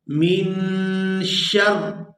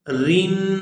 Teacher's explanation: را جب شین کی زبر کے ساتھ پڑھی جائے گی تو یہ پورا ادا ہوگی، اور جب یہ اپنی حرکت یعنی زیر کے ساتھ ادا ہوگی تو پھر یہ باریک ادا ہوگی